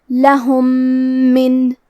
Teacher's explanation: یہاں حکم ہے ادغام متماثلین صغیر. ہمیں پہلے میم کو دوسرے میم میں ملا کے ایک ہی میم غنہ اور تشدید کے ساتھ پڑھنا ہے